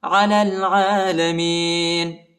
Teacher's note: لام کو لام کے ساتھ ملائیں گے اور یا اور الف نہیں پڑھا جاتا